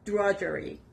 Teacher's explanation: the stress is on the first part